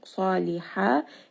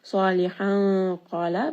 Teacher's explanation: So when we have fathatain, this is going to be a 2-count mad if you are stopping. Now because I have stopped, I will make this a 2-count mad.